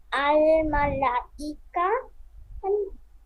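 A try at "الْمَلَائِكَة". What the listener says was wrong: ইয়ে টান হবে না। আল মালাইকাহ। এই যে দেখেন, মদের হরফ বা মদের হরকতের উপরে মোটা চিহ্ন থাকবে। সিন আলিফ জবর সা, জবরের বাম পাশে খালি আলিফ, মদের হরফ। মদের হরফের উপরে এই যে মোটা চিহ্ন, বামে গোল হামজা।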